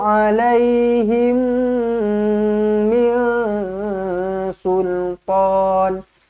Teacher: mim kosong bertemu dengan mim sabdu rapatkan bibir dengungkan dua harakat